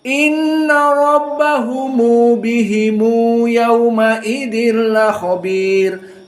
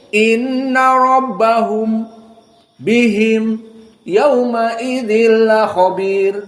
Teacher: qiraah Abu Jafar dan Ibnu Katsir agak panjang karena dia harus menyambungkan mim dalam keadaan didamahkan. Silatul mim namanya. · antara mim dengan yaumaidin disambung agar jelas dua harakatnya